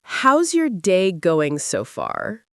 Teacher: You stress how's day and so far.